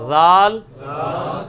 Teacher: یہ سیٹی کی آواز نہیں ذال میں آنی چاہیے، یہ نرمی والا ہے